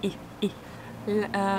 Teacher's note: the pronunciation of E sound is tense. You smile. And your mouth is like this.